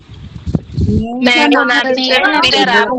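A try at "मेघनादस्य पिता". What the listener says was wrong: अत्र मेघनाथः अस्ति, नाथः इति न भवति, मेघनादः इति। अत्र टङ्कनदोषः जातः, क्षम्यतां तदर्थं।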